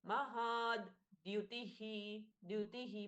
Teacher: ह के साथ में द जुड़ा है हल्का सा आघात है दति का